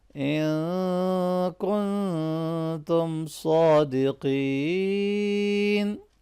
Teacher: ان کن دونوں نون ساکن ہیں اور دونوں کے اوپر ہم اخفا کریں گے